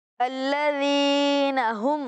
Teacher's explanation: इस अंदाज में पढ़ना है कि मीम साकिन में गुन्ना ना हो, इजहार शफवी हो।